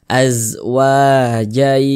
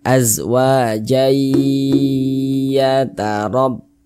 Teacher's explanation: Jangan dibaca azwajan, jangan, tapi dibaca jai, begitu. Kemudian digunnahkan atau didengungkan. Jadi suaranya itu kita tahan, kita panjangkan sejenak. Azwajai. Nah, kita tahan, kita panjangkan sejenak.